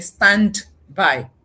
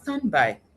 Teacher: you have unintentionally unconsciously deleted the da and that is a connected speech process which cuts across both native and non-native English um accents.